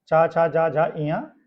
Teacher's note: तालु की सहायता से जो व्यंजन वर्ण उच्चारित होते हैं वो तालव्य व्यंजन कहलाते हैं